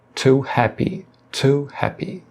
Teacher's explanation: Na palavra to, também ocorre a aspiração, porém aqui com o som de T.